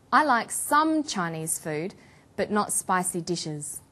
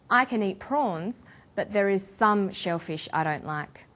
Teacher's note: we put the stress on the word some. For example, I like some Chinese food, but not spicy dishes.